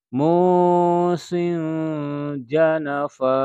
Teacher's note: disamarkan bunyi sinnya karena di hadapannya ada huruf jim